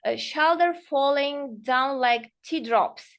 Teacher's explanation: it is falling tone because we want to show our sadness